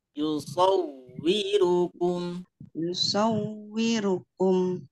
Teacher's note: Hati-hati saunya jangan terlalu lama. Tekanan biasa saja.